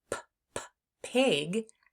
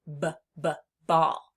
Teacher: So even though the mouth pictures are the same for P and B, we know that the P sound is unvoiced and the B sound is voiced